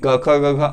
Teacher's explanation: इस वजह से इनको हम लोग स्पर्शी व्यंजन कहते हैं। क वर्ग वालों का यानी कि क ख ग घ अंग का जो उच्चारण स्थल है वो कंठ है